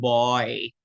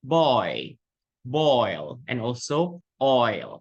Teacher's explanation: The first vowel or the vowel of O, okay, you need to pronounce it a bit longer in duration, okay, and it is the nucleus of the diphthong itself. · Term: diphthong oi